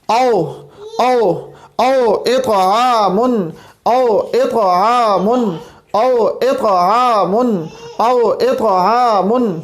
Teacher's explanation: حمزہ جو ہے یہ ہمارے پاس حلق کے آخری حصے سے ادا ہو رہا ہے